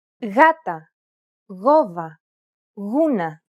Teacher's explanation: When it precedes an A, O, or U, however, it's pronounced like a loosely held G sound.